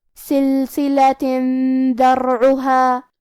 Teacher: کلمت ذرعها دال حروف الاخفاء میں سے ہے اور اخفاء کا معنی ہے چھپا دینا لہذا ہم تنوین کو چھپاتے ہوئے لیکن غنہ کے ساتھ یہ حکم کو ادا کریں گے